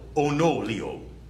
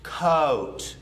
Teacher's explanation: Most of the South has more of an open O that goes from an ah to an O, so it's spread.